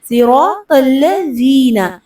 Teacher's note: ذی میں زال پہ زبان دانتوں کے کنارے سے لگے گی، نرمی سے ادا ہوگا